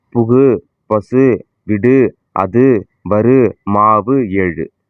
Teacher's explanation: இவ்வாறு ஓசை குறையாமல் ஒரு மாத்திரை அளவில் முழுமையாக ஒலிப்பதை முற்றிய லுகரம் என்பர்